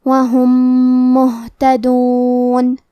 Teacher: آخری میں را پہ تنوین زبر ہے، پھر حرف الواو ہے کلمت وہم، کیونکہ یہاں حکم ہے ادغام بغنہ تو ہم یہ حکم کو غنہ اور تشدید کے ساتھ ادا کریں گے اجرا وہم۔ کلمت وہم کے آخری میں میم ساکن ہے، پھر حرف المیم ہے کلمت مہتدون، یہاں حکم ہے ادغام متماثلین صغیر تو ہم یہ حکم کو غنہ اور تشدید کے ساتھ ادا کریں گے